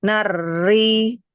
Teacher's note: Takrirnya dikurangkan, tahan di makhraj huruf ro. Nari, jangan diangkat pangkal lidahnya.